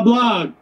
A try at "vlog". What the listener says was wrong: Vlog. There's a V. Vlog.